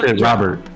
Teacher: it's the glottal stop which is the lack of over enunciation of the letter t